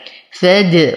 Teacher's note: وقلقل الدال فهي من حروف قطب جد حال سكونها